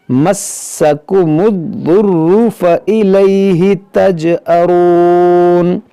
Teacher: مسکم الضر، یہ دونوں لفظ مشدد ہے، دونوں کو پڑھیں گے دو بار